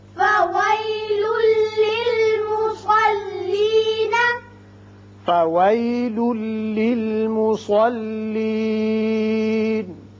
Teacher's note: یہاں لام کے اوپر دو پیش تنوین ہے، اس کے بعد لام ہے، ادغام بغیر غنہ ہوگا